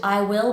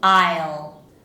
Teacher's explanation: try not to separate those out into I will, but to say it as one syllable